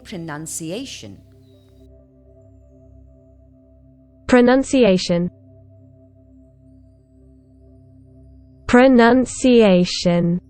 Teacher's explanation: the first and the strongest stress is on a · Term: syllable stress